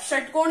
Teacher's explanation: षटकोण जब भी हम बोलते हैं तो क्या होती है, हल्की सी हमारी जीभ मुड़ जाती है, ठीक है, षटकोण, यानी कि हमारी जीभ को हल्का सा पीछे से मुड़ के फिर हम श बोलते हैं, ऐसे योग करती है हमारी जीभ, ठीक है। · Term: मूर्धन्य